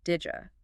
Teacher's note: Did you almost always becomes didja. That did sound meets the Y sound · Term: assimilation